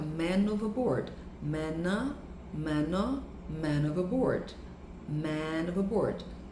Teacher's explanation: o que eram duas palavras vai soar, ter o som de apenas uma só. Então, fica man overboard, man overboard.